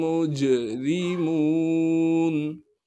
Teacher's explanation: میم کو جیم ساکن سے ملائیں گے، اس لیے کہ جیم ساکن ہے اور جیم پر قلقلہ کیا جائے گا